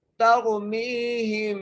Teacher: ترمیہم تا کو را سے ملانا ہے، را کو موٹا کر کے پڑھنا ہے، میم کو یا سے ملاتے ہوئے ایک الف کی مقدار کھینچ کے پڑھنا ہے، ترمیہم، یہاں پر غنہ کریں گے میم ساکن پر